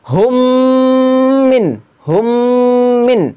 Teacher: এক আলিফ গুন্না করে পড়তে হবে